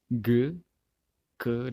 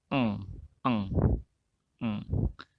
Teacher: Velar ini back of tongue against the velum. Velum itu soft plate yang berada di dalam mulut bagian atas.